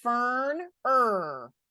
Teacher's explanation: the r is affecting the way we say the E so it's saying ER